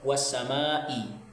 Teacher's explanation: mat asli bertemu dengan hamzah dalam satu kata, sehingga membacanya 2,5 alif atau 5 ketukan atau 5 harokat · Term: mat wajib mutasil